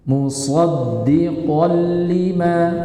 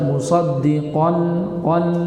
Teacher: Yang pertama fathah tanwin bertemu dengan lam. Maka di situ masuk secara zat dan sifat. Jadi bacanya musoddiqol lima. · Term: Idgham bilagunah, Idgham bila gunah